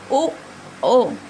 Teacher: ये हमारे कंठ और ओष्ठ ये दोनों से मिलकर बोला जाएगा